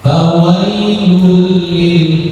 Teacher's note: Idgham artinya masuk, lebur. Jadi nun sukun atau tanwinnya lebur ke huruf lam. Fawailul hilang, tanwinnya hilang. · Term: Idgham bila gunna